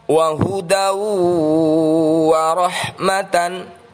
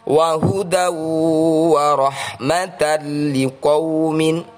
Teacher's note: Fathah tanwin bertemu waw adalah bacaan idgham bighunnah, dibaca mendengung 2 harakat.